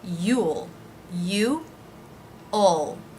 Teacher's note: dark L at the end